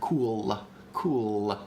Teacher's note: like if i had something that like cool when i release when i release the ol at the end of cool there's a there's a little tiny schwa there